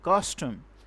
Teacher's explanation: first we will give stress on the first syllable, on the second syllable there will be little stress, as like custom. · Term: Trochee